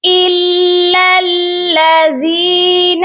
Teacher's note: لام یہ والا بھی مشدد ہے اور دوسرا لام بھی مشدد ہے. ہم نے ان کو سختی سے پڑھنا ہے